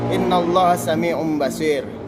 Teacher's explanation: Dalam hukum nun mati atau tanwin, iklab berarti menukar atau mengganti nun mati menjadi tanwin. Nun mati atau tanwin menjadi mim mati disertai dengan dengung. Nun mati atau tanwin dibaca iklab apabila bertemu dengan ba.